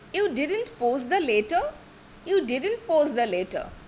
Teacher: Here I am expressing dissatisfaction, right? So I should use rising tone.